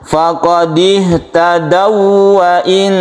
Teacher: Tapi kalau wawu bertemu wawu ini tidak berdengung tapi tetap ditasydidkan, artinya ditabrakkan ke wawu ini. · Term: Idgham mutamatsilain